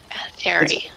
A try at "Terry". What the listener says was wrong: It's pronounced Terry. The H is silent. Yeah, it's pronounced Terry.